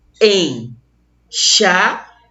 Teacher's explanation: Semivogal numa extremidade, semivogal na outra extremidade, e nós tivemos uma vogal bem no meio. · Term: tritongo nasal